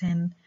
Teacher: the vocal folds don't vibrate, and this is why sa is a voiceless alveolar fricative